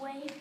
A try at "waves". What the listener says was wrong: Go back. Let me hear you put the S on that again.